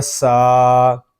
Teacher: سین کو ہم ایک الف تک کھینچ کر پڑھیں گے کیونکہ یہاں پہ کھڑا زبر آ رہا ہے، اور کھڑے زبر کو ہم ایک الف تک کھینچ کر پڑھیں گے.